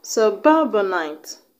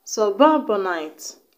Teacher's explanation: the stress is on the second syllable. On the ba.